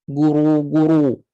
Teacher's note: bila saya muncong dan saya naikkan pangkal lidah guru guru bunyi akan jadi tebal